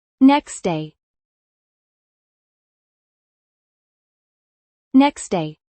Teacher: The final sound almost disappears.